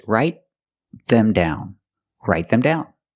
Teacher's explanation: The T in write is a stop T because it's before a consonant.